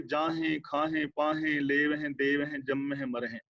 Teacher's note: ਹੁਣ ਜਦੋਂ ਵੀ ਗੁਰਬਾਣੀ ਦੇ ਅੰਦਰ ਕਿਸੇ ਕਿਰਿਆਵਾਚੀ ਸ਼ਬਦ ਦੇ ਆਖਰੀ ਹਾਹੇ ਨਾਲ ਸਿਹਾਰੀ ਲੱਗੀ ਹੋਵੇ, ਧਿਆਨ ਰੱਖਿਓ, ਜਦੋਂ ਵੀ ਕਿਸੇ ਕਿਰਿਆਵਾਚੀ ਸ਼ਬਦ ਦੇ ਆਖਰੀ ਹਾਹੇ ਨਾਲ ਸਿਹਾਰੀ ਲੱਗੀ ਹੋਏ, ਆਮ ਕਰਕੇ ਉਹ ਬਹੁਵਚਨੀ ਸ਼ਬਦ ਹੁੰਦਾ ਹੈ ਤੇ ਉਸ ਦਾ ਉਚਾਰਨ ਨਾਸਕੀ ਹੋਏਗਾ, ਬਿੰਦੀ ਸਹਿਤ ਹੋਣਾ।